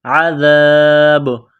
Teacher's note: عذاب با زیر بی، عذابی جب سٹاف کریں گے، وقف کریں گے تو با کو سائلنٹ کریں گے۔ عذاب با ساکن ہو جائے گی تو یہاں پر قلقلہ کریں گے